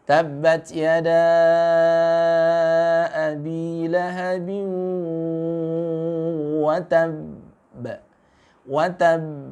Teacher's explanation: kalau ada tasdidnya, qalqalahnya agak sedikit tertahan bunyinya